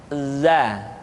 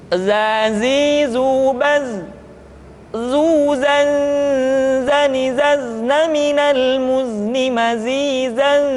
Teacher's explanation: huruf za diucapkan dengan cara ujung lidah kita berada di antara dua gigi seri bagian atas dan bagian bawah za menyerupai dengan pengucapan huruf zatin.